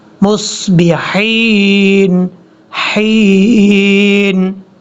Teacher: میم کو صاد کے ساتھ جب ملانا ہے، یہ یاد رکھیے گا صاد حروف مستعلیہ میں سے ہے، پر پڑھا جائے گا. با کے بعد جو ہا ہے، یہ ہا بھی باریک ہے، اس کو بھاری ساؤنڈ کے ساتھ نہیں پڑھنا